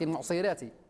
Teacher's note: ركزت على ترقيق الراء